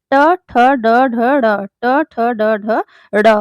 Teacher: मुर्धा से यानी कंठ के थोड़े ऊपर का जो स्थान होता है वहां से बोले जाने वाले वर्ण को मूर्धन्य वर्ण कहते हैं